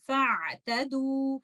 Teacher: اس situation میں اگر آپ کنٹینیوسلی ریسائٹ کر رہے ہیں تو آپ پڑھیں گے فاعتدوا. آپ حمزۃ الوصل کو ڈراپ کر دیں گے اور حمزۃ الوصل کو نہیں پڑھیں گے